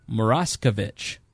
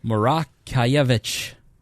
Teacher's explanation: The O is a hard vowel here. The IE is a cross between a hard A and a yeah sound.